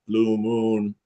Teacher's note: Your lips are circled like you're whistling and you can feel your tongue is more in the back of your mouth.